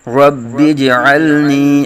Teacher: رب جیم میں قلقلہ کریں گے ، رب اجعلنی، عین کی آواز سے ہی کریں گے، اللہم